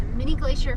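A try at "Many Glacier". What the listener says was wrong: Not mini, Manny. M-A-N-Y, Manny. Manny Glacier.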